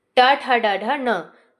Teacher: जो ढ है वो आपका आ जाएगा मूर्धा के अंतर्गत, मतलब कि इसका जो उच्चारण स्थान है वो मूर्धा हो जाएगा